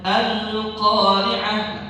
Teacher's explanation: kalau kita baca alif lam, al itu nggak ada gunnah di situ, jadi nggak ditahan.